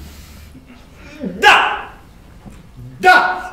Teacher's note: La consonne D, par exemple, se prononce en donnant du bout de la langue au-dessus des dents d'en haut. Da!